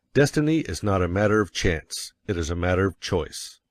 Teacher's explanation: you will want to emphasize destiny, for it is the principal idea in your declaration. And you will put some emphasis on not, else your hearers may think you are affirming that destiny is a matter of chance. · By all means, you must emphasize chance, for it is one of the two big ideas in the statement. Another reason why chance takes emphasis is that it is contrasted with choice in the next sentence.